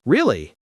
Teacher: when we say really with a rising tone, it means surprise